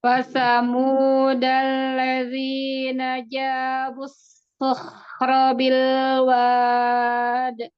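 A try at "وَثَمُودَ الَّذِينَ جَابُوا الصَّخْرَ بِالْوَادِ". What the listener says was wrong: Bilwad, tidak bilwad, tidak ke atas suaranya wad. di sini kan tipis ya, Bun. Jadi arah suaranya itu ke bawah. Bilwad.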